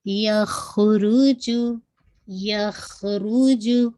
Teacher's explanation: रॉ को heavy कीजिएगा, ख़ा को हैवी रखिएगा